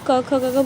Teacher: हमारा उच्चारण गले से होता है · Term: कंठया